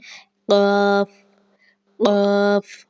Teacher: زبان کی جڑ اور تالو کے نرم حصہ سے یہ ادا ہوتا ہے